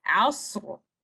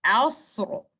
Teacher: Letter Ra with full mouth, with thickness and Tafkheem.